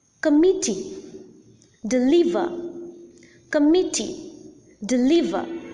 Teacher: there are three syllables and the middle syllable or the second syllable is the most prominent syllable and hence the second or the middle syllable is the stressed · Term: stressed syllable